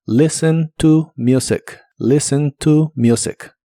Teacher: La T de listen no se pronuncia y la U de la palabra music se pronuncia como you.